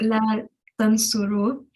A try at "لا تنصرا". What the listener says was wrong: You Jewel is la tans. You read la tansuru. It's la tansura. Jewel is la tansura.